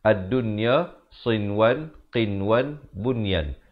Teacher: Keempat-empat perkataan tersebut bila nun mati bertemu ya ataupun nun mati bertemu waw, tidak dibacakan dengan dengung tetapi dibacakan dengan jelas sahaja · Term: izhar mutlak